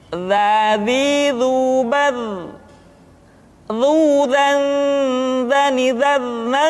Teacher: huruf za diucapkan dengan menyentuhkan ujung lidah dengan dinding dua gigi seri bagian atas seperti kita mengucapkan huruf tha. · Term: huruf dza